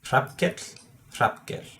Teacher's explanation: you only have to do an L and change the way you use your vocal cords